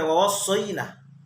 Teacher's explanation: Wa wassay, ini namanya haraf lin. Haraf lin ini adalah tidak panjang.